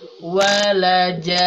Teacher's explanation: Karena bertemu huruf bertasydid, maka panjangkan dulu ja-nya 6 harokat. Baru setelah itu tambah dengan gunah selama 2 harokat. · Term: panjang 6 harokat